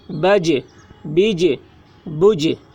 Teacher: جیم حروف قلقلہ میں سے ہیں اور اس پر جزم ہے، اس لیے جیم میں قلقلہ ہوگا۔